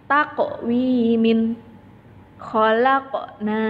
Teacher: Sini ada huruf qaf berharokat sukun, maka huruf qafnya harus dipantulkan. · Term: qalqalah